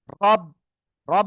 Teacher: রর উপরে জবর বা পেশ থাকলে র অক্ষর কি করে পড়তে হয়? মোটা আওয়াজে পড়তে হয়।